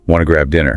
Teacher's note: that slight upward inflection on dinner. You know, it signals an inviting question, not just a flat statement.